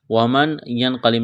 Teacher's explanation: ومن ینقلب نہیں پڑھیں گے، ومن ینقلب اخفا کریں گے، نون ساکن کے بعد قاف ہے، قاف کو موٹا کرنا ہے، با پر قلقلہ کریں گے